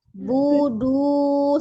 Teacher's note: sempurnakan doma dengan memonyongkan bibir